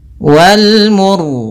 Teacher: Kemudian ro-nya di sini kita baca dengan ro tebal disebabkan karena sebelum huruf ro yang disukunkan ada huruf yang dhammah.